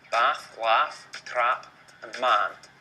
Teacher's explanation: the vowels in bath and laugh are the same as the vowels in trap and man